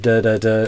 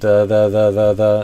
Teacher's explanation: that kind of smooth continuous th sound with less tongue pressure against your upper teeth so that it's able to vibrate continuously